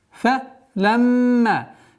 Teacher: назализация в размере двухогласовок мим, после которой, естественно, долгота в размере двухогласовок фатха.